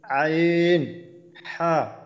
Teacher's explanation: 2 নম্বর মাখরাজ হলকের মধ্যখান হইতে